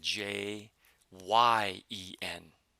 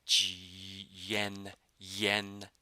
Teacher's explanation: if you pay attention to the word Jen in English you'll notice that there's a y sound in there it almost sounds like you're pronouncing J ye en right G